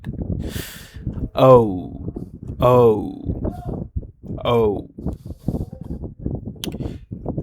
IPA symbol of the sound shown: oʊ